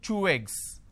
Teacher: I'm using way sound in between these two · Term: link